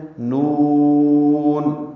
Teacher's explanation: اس کو 6 حرکات لمبا کرتے ہیں۔ نون، اگر نون کے آخر میں نون پر رک جائیں، وقف کر لیں تو یہ بھی جائز ہے، اور اگر ملا کر پڑھیں تو وہ بھی جائز ہے۔ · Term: مد لازم حرفی مخفف